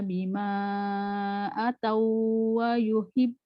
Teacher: Dia masukkan saja idgham mutamassil lain. Dia masuk tapi tak ada dengung